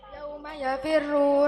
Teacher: ra tarkik karena ra didahului kasroh